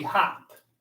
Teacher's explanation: without the silent E at the end, we would just have the short O sound. O would say ah, and the word would be hop.